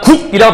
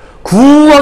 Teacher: 뭔 얘기냐면 우리가 국이라고 발음하게 되면 소리가 끊어지죠. 구하게 되면 소리가 열리지만 국하게 되면 소리가 끊어져 있단 말이에요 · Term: 파열음